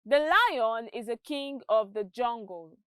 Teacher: the stressed words are lion king and jungle